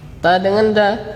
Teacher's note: Ujung lidah. Nah, ujung lidah menempel di pangkal dua gigi seri atas. Nah, pangkal dua gigi seri atas.